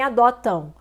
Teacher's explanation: você vê aqui o M com som de U e um som nasal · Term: ditongo nasal